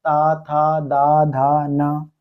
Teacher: सब में जीभ दांत पे टकराती है इसलिए उसको दंत वर्ग बोलते हैं।